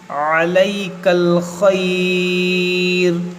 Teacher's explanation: यहाँ पर हम वक्फ़ करेंगे तो मद्दे लीन आरिज़ होगा, क्योंकि यहाँ हुरूफ़ लीन के बाद اور آپ پر عارضی سکون آ رہا ہے وقف کی وجہ سے.